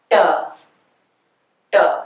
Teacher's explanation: you curl your tongue and Flip It Forward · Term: retroflex consonants